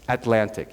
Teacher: At the end of a syllable, you would say Atlantic, or that's how I pronounce it, Atlantic. You don't release the T.